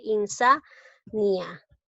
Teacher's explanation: Lleva la mayor fuerza de voz en la sílaba sa. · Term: sílaba tónica